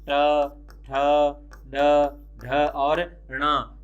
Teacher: जीभ पीछे की तरफ मुड़कर के जिस ऊपर के भाग को टच करती है, तालू के जो पीछे का भाग होता है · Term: मूर्धन्य वर्ण